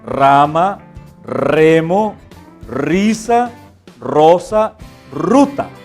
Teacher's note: sonido r es vibrante fuerte se representa con la letra r este sonido también es prolongado · El sonido R es vibrante fuerte.